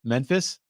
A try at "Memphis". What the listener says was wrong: The way you say it is like MEN. You say Memphis. Yes. It's Mem. Memphis. Memphis.